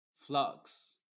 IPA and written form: flʌks (Flux)